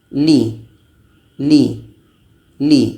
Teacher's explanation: Ketika la ini baris bawah sifatnya adalah tarkik, tipis.